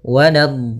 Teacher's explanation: maka panjangkan dhatnya dulu 6 harakat, kemudian sempurnakan di dha-nya, kemudian baru masuk ke huruf lam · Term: mad lazim musaqqal kalimi